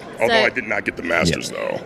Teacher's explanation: It's almost like a vocal fry thing. If he stays in the upper register, he's fine. But then he ends his sentences by going down. Yeah, he's got like 15 little marbles at the bottom of a barrel that just make the final part of the word.